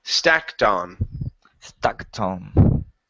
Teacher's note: one trick you can use is to connect the T to the word on